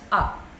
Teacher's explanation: So you have this phonetic symbol A with the colon. So A with the colon has to be pronounced as a. Your jaw has to be dropped down.